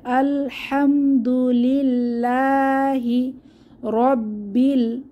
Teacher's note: আল্লাহর লাম পাতলা হবে কারণ তাশদিলা লাম এর আগের হরফ লামে জের এসেছে এবং লা লা তে এক আলিফ টান হবে খাড়া জবর আছে